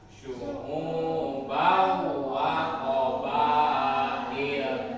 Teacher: Maka dibaca dengung, pakai gunah, dengung gunah. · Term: idgham ma'al gunah